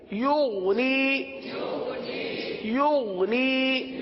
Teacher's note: یغنی تو یہ قلقلہ ہو گیا. تو غین میں قلقلہ نہیں ہوتا اور غین کو گاف کی طرح نہیں پڑھتے